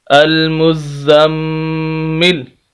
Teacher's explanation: ناک میں آواز جائے گی کیونکہ یہ شد والا میم ہے۔ نون مشدد، میم مشدد، تنوین یعنی دو زبر دو زیر دو پیش، ان چیزوں پر غنہ ہوتا ہے، تو یہاں پر غنہ ہوگا المزم، لام پیش لو، المزملو، سخت کرنا ہے، زا کو بھی اور میم کو بھی اور غنہ بھی کرنا ہے۔